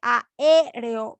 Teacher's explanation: En este caso tenemos dos vocales abiertas, A y E.